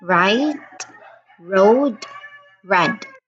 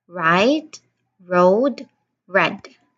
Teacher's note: Your tongue is curled slightly and it does not touch the roof of your mouth at all like so the tongue is pulled slightly at the back and then uh no touching of the roof of the mouth. · the r sound, it is curled slightly backward, but it does not touch the roof of the mouth at all